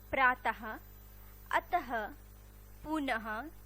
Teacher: इसका उच्चारण करते वक्त ह की ध्वनि निकलती है, जैसे प्रातः, अतः, पुनः आदि। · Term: विसर्ग